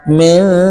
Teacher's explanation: আমরা মোটামুটি দেখেন মেনজু এর জায়গায় হয়েছে মেজু, অর্থাৎ নুন স্পষ্ট না হয়ে চন্দ্রবিন্দু হয়েছে